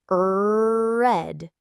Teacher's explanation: It's often a retroflex sound, meaning the tongue curls back without touching the roof of the mouth. If you practice a word like red, you should consciously feel your tongue pulling back. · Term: English R